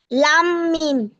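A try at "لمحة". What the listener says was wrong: না, মিম হবে না ওটা। এই যে মিম হচ্ছে এরকম।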